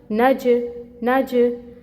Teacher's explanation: ठीक है, आवाज़ बाउंस कर रही है, यानी कि जीम हरूफ कलकला में से है तो जब ये साकिन होगा, जब जीम साकिन होगा तो इस पर कलकला होगा। ठीक हो गया, क्योंकि यहाँ पे वो साकिन हो रहा है तो हम कलकला कर रहे हैं।